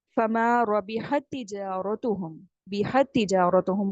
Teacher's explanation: تا یہاں پر آپ نے کمپلیٹ ادغام کر دینا ہے, ایک ہی تا پڑھنا ہے